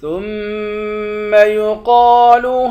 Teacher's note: تا کو میم کے ساتھ ملا کر میم پر غنہ کریں گے، قوف کو موٹا پڑھیں گے، قوف موٹے حروف میں سے ہے۔